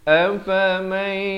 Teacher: Di sini idgham bi gunnah, masuk beserta dengung.